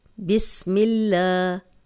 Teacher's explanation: اللہ کا لام اور پیچھے زیر ہو تو لام باریک پڑھتے ہیں، اکثر لوگ پڑھتے ہیں بسم اللہ، تو یہ غلط ہو جائے گا، کیونکہ اللہ کا لام جو شد والا ہے اس سے پیچھے زبر ہو یا پیش ہو تو تب یہ لام موٹا پڑھتے ہیں، ورنہ ہر لام باریک ہے۔